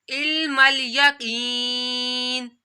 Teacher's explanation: काफ या ज़ेर की, या साकिन से पहले ज़ेर आ रही है तो या मदा भी करना है। यहाँ पर इसको एक अलिफ के बराबर खींचना है